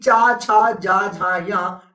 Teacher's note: ये आपके स्पर्श संघर्षी व्यंजन होते हैं